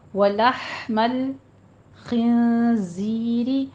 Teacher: والدم میں بھی دال کے پر تشدید سختی سے پڑھیے، والدم، ولحم الخنزیر، ہا پہ آپ نے ہمس لے کر آنا ہے، وسط حلق میں آواز لے جائیے، اس کو سٹاپ کرنا ہے، قلقلے نہیں کرنے، لام کے اوپر بھی نہیں کرنا، ہا پر بھی۔